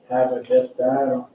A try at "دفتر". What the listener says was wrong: No, there's no elongation. Daftar. Daftar.